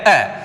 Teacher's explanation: Important ध्यान रखेंगे, अ मध्य स्वर है, अ के उच्चारण में जीव्या का मध्य भाग सक्रिय रहता है, प्रयत्न ज्यादा मध्य भाग से किया जाता है, इसलिए मध्य स्वर कौन सा है, अ।